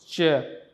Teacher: we are holding but releasing with some friction slowly. So that's why it is called affricate.